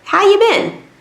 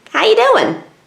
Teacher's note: Sometimes the auxiliary verb disappears completely.